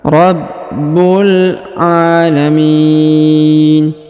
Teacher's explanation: dipanjangkan dua harakat karena di atasnya terdapat Alif kecil alamin kemudian huruf Mi dipanjangkan boleh dua boleh empat boleh enam harakat karena di depan huruf Mi terdapat ya sukun atau ya mati